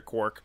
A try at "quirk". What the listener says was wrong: Quirk. Quirk. As in something quirky, not quark as in a bartender in space.